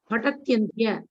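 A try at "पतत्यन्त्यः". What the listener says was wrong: You are making pada. You are think pada will break. It is not pada.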